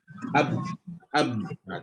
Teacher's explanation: Jadi huruf-huruf bila kita cerita tentang masuk syiddah. Syiddah huruf yang tersekat. Kenapa dia tersekat? Sebab makhraj yang tertutup. Macam ba, ab, tertutup huruf ba ni.